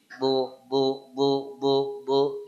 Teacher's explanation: makhrajnya dia berat dia makhrajnya di sini pangkal ee gigi ee lidah bagian belakang nempel ke gigi gigi geraham